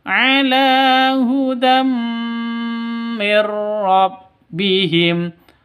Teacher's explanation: Tanwin bertemu dengan mim. Cara bacanya masuk ke mim disertai dengung 2 ketukan karena ini idgham bi gunnah.